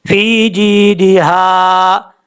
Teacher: یہ ہا بھاری ساؤنڈ کے ساتھ نہیں پڑھتے بلکہ باریک ہا ہے